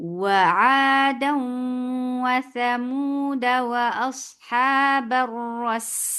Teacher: फतहा बिल्कुल छोटी कर पड़ी है और अलिफ को एस्टेब्लिश नहीं किया। और जब आप इसको स्टॉप करेंगे तो इसी तरीके से करेंगे, वआदन व समूद।